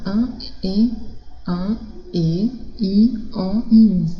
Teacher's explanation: fonemas vocálicos nasais, porque tem esse som que como se fosse saindo pelo nariz